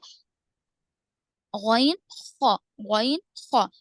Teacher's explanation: ادنائے حلق کا ابتدائی حصے سے ادا ہونے والے حروف 2 ہے